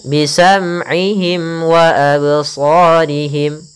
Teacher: mim mati bertemu waw, izhar syafawi, jelas suara mimnya tidak boleh ditahan